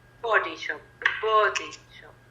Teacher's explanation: It's on body. It's not on shop.